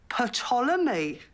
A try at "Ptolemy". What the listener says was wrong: I don't think so. The P is silent, as in psychopath. But it's from the ancient Greek. They had silent peas.